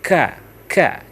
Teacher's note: langit-langit itu itu tempat keluarnya ka jadi dia seakan-akan apa ee angin itu mendorong kena langit-langit lalu keluar dia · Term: huruf Kaf